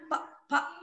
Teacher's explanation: इसको जब हम बोलते हैं तो हमारे ओठ आपस में टकराते हैं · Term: ओष्ठ व्यंजन